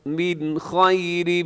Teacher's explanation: من میں نون ساکن کے بعد خا ہے تو یہاں اظہار حلقی